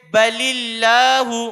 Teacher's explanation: لفظ اللہ کے لام سے پہلے زیر ہو تو لفظ اللہ کا لام باریک ہوگا۔ لفظ اللہ کے لام میں ایک چیز کا خیال رکھا جائے کہ طلبہ لام میں کے باریک کرنے میں دقت ہوتی ہے ان کو، جیسے بلی اللہ، لام پر کر دیتے ہیں تو لام کو باریک کر کے ادا کرایا جائے، جیسے بلی اللہ، اس کا اجرا یاد کرایا جائے۔